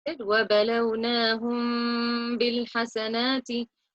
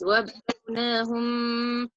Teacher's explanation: we have to conceal or hide the Meem and merge it with the Ba, and we hold the sound for two to nasalize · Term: ikhfa